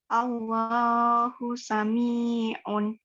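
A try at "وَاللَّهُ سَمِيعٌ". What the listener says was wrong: Wallah ya, ada wawunya.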